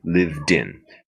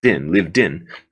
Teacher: I just take that last D and I put it into the in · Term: vowel linking